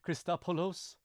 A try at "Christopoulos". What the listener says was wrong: Well, you're trying to do the Greek accent. Just say Christopoulos.